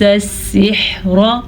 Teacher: را کو پر پڑھیں گے. را کے اوپر زبر ہے اسی لیے